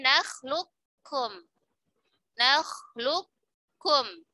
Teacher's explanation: Lebih utama dibaca kamil, berarti qafnya dileburkan sempurna ke huruf kaf. Jadi nakhlukum. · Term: idgham mutaqariban shaghir